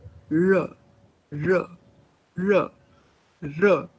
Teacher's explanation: You curl your tongue backwards against the back of the teeth ridge. R, R. So that is why there's just one sound which we speak of as post-alveolar, and that is R. · But so far as place of articulation is concerned, for R, it is identical because your tongue is curled backwards against the back of the teeth ridge